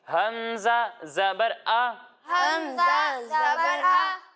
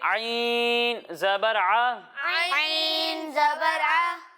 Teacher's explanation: جب ہم حمزہ کی ادائیگی کریں گے تو اسے حلق کے نچلے حصے سے پڑھیں گے اور جب ہم عین کی ادائیگی کریں گے تو اسے حلق کے درمیانے حصے سے پڑھیں گے، یعنی اسے پڑھیں گے حمزہ زبر آ، حمزہ زبر آ، اور اسے پڑھیں گے عین زبر آ۔